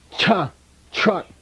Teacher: It's a palatal. It's got nothing to do with T or R.